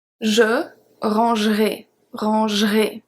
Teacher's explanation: And usually in the futur simple, depending what type of accent, but usually we are not going to say the E. So we are going to say je rangerai, rangerai.